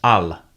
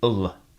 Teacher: In Standard Arabic, it's al, but in Darija, it's reduced to ul.